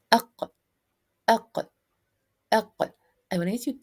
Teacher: One for the letter qaf, which is emitted by the collision between the back of the tongue and the soft palate